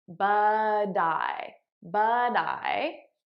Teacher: i'm transferring the t sound on to the next word now you'll notice i'm saying it as a soft d because that's american pronunciation